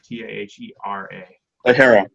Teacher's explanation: And sort of no emphasis, like all syllables kind of get equal emphasis.